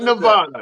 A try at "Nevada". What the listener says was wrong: Yeah, it's an E, not an A, not a na. It's a ne. Nevada.